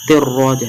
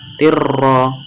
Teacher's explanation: Huruf ro itu termasuk huruf idgham bila gunnah maka dimasukkan tanpa disertai dengung. Ro-nya itu ditafkhimkan, ditebalkan, ro, tirro.